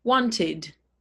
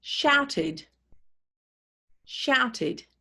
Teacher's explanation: The ed is pronounced id, id, and the stress is on the base word.